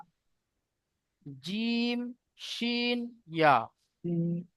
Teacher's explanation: দেখেন জিহবার মাঝখান, এই জিবের মাঝখান এবং উপরের তালুর সাথে লাগিয়ে জিম শিন ইয়া উচ্চারিত হয়। জিম শিন ইয়া, এই 3টি অক্ষর জিবের মাঝখান এবং উপরের তালুর সাথে লাগিয়ে উচ্চারিত হয়।